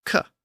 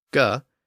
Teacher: And the unvoiced version of the d sound, d, is the t sound, t. And the unvoiced version of the g sound, g, is the k sound, k.